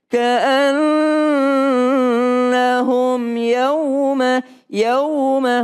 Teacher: Mim sukun ketemu dengan ya enggak berdengung. Jangan ditahan.